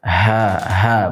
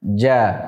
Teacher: Ha, bisa dirasakan sendiri. Sehingga untuk jim karena dia sifatnya jahar tidak banyak nafas yang keluar. Sehingga kita mengucapkannya ja. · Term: sifat jahar